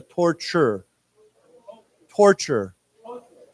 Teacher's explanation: the second T has a CH sound to it